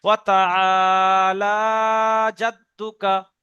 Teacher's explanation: লাম খাড়া যাব লা টান দিচ্ছি